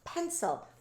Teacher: Please make sure you're not saying puh, and make sure the students aren't saying puh either, because we don't want to add that extra vowel sound after the P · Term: p sound